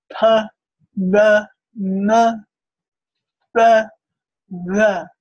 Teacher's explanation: labioalveolar, and that means you've got that lower lip meeting your alveolar ridge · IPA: [p͇, b͇], [m͇]